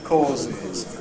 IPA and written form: ˈkɔːzɪz (causes)